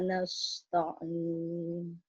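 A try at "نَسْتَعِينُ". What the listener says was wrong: Sinnya itu nas terlalu masuk, Bu ya. Nas di depan dia. Nasta'in. Dicoba nastain aja, Bu. Nas. Nah, itu terlalu dalam, Bu. Nas, keluarkan. Ya, terus mulutnya lidahnya ya di mana? Di depan ya. Diadu dengan langitnya, Bu. Sa itu namanya.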